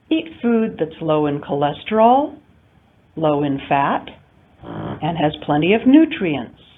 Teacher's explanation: We have rising intonation in the elements in the series until the very final one where we have rising, falling intonation. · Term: series intonation